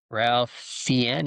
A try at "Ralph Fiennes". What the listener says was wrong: It's Ray Fiennes. because his name is spelled Ralph, but it's pronounced Ray. It's weird, but it's Ray Fiennes.